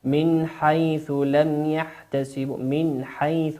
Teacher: النون هنا نون ساكنة أتى بعدها حرف الحاء، والحاء أعزائي المشاهدين كما قلنا هو من حروف الإظهار، والإظهار هو الوضوح